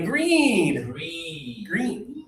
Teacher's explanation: Your tongue is high in your mouth. E. And there's just a little air.